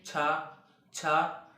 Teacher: आपकी जो जीभ होगी वह तालु से टकरा रही होगी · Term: तालव्य